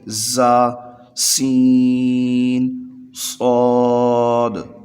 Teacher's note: صاد کو ادا کرتے وقت سیٹی کی طرح آواز، تیز آواز نکلتی ہے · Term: حروف صفیریہ